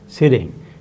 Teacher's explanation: this middle sound t being pronounced as something like ra is, we are told, because it belongs to both the vowels, the e as well as ing. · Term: ambisyllabic